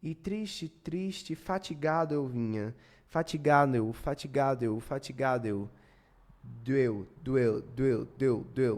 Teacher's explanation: Como a sílaba tônica é o Gá, o Do vai ficar fraco. Tudo que vem depois da sílaba tônica é mais fraco.